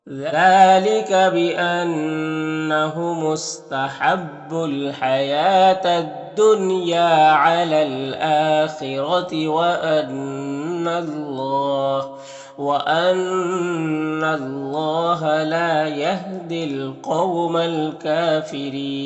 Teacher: यहाँ पर अलिफ लाम हुरूफ कमरी काफ के शुरू में तो लाम को पढ़ेंगे, अलिफ को नहीं पढ़ेंगे। काफ में खड़ा ज़बर है, ये अलिफ मद्दा की तरह होता है, रॉ के नीचे ज़ेर, रॉ को बारीक पढ़ेंगे और यहाँ पर वक़्फ़ करेंगे तो मद्दे आरिज़ वक़्फ़ी होगा, तो इस तरह से पढ़ेंगे।